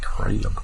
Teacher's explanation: uses a southern accent to pronounce crab with, I'm going to say, about 3 syllables.